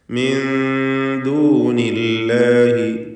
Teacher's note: സാക്കിനത്താനോൻ ശേഷം ദാൽ ഇഖ്ഫാ ഹഖീഖി നൽകി മറച്ചു മണിച്ചുകൊണ്ട് ഉച്ചരിക്കുക